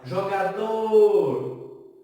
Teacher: Percebam que a última sílaba, o dor, é a que mais se estica. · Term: sílaba tônica